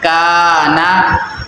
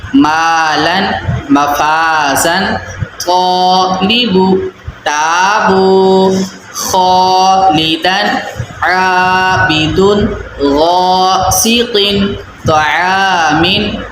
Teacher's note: کاف حرف جو ہے وہ باریک حرف ہے، تو کاف کی وجہ سے ہم نے الف کو بھی باریک پڑھنا ہے